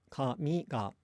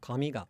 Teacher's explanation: pronounced low, high, low, with the particle attaching low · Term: pitch accent